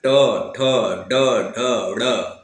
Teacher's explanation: हमारी जीभ उलट जाती है और इसका जो ये आगे वाला भाग उलट करके है ना कठोर तालू को स्पर्श करती है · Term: मुर्धन व्यंजन